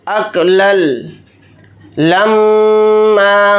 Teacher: मीम के ऊपर तशदीद है तो मीम के अंदर गुन्ना करेंगे और यहाँ पर हालत वक्फ में मीम अलिफ के साथ एक ज़बर लगाकर पढ़ेंगे, दो ज़बर नहीं पढ़े जाएंगे हालत वक्फ में। · हालत वक्फ में मीम अलिफ के साथ एक ज़बर लगाकर पढ़ेंगे, दो ज़बर नहीं पढ़े जाएंगे हालत वक्फ में। और अगर यहाँ पर हम आयत नहीं करते हैं तो फिर मीम के ऊपर दो ज़बर लगाकर पढ़ेंगे।